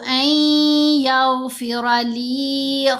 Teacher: ایغ نہیں پڑھنا، نہیں، نون پڑھا جا رہا ہے لیکن صرف غنہ کی صفت اس کی باقی ہے، پورا نون کی آواز نہیں ادا ہوگی